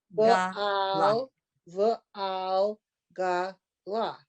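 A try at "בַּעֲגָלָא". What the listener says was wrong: Okay, stop. I hear a lamed in there. I hear a l. That's after it's ba'agala.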